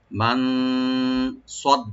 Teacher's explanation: সটাকে deep করে পড়ব, সিন যেন না হয়। আর ডালটাকে, ডাল যেটা ডাবল করে পড়ব, ডাল কোনো টান হবে না।